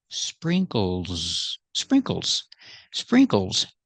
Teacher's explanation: The S makes the Z sound like zebra. Z. So the last S is Z together.